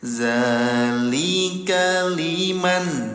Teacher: Nah, bertemu dengan huruf lam, tempelkan bunyi nun sukunnya ke huruf lam. Itu yang dinamakan dengan idgham, ya, memasukkan bunyi nun sukun ke huruf lam. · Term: idgham bila gunnah